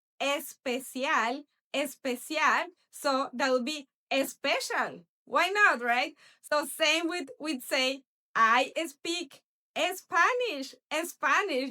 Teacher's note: Because in Spanish we don't have words that start with s. So people just have this tendency to add a little vowel there